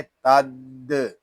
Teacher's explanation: ता दाल ज़बर तद, अल हयातद। यहाँ दाल मुशद्दद है, इसको जमाओ के साथ अदा करेंगे। इसको तद इस तरह नहीं पढ़ेंगे, इसको पढ़ेंगे तद।